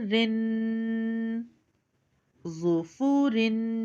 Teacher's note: गुन्ना करते वक्त इसकी आवाज़ हम नाक में लेकर जाएंगे।